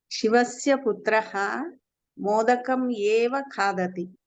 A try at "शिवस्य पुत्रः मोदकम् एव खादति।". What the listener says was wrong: उत्तमं।